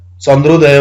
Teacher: आकार र इकार दीर्घ इकार मिल्दा एकार उच्चारण हुँदो रहेछ ए बन्धु रहेछ ए स्वर निर्मित हुने रहेछ महा प्लस ईश्वर हुँदा महेश्वर। अमा उकार मिल्दा ओकार उच्चारण हुँदो रहेछ ओकार बन्धु रहेछ चन्द्र प्लस उदय चन्द्रोदय भनौँ।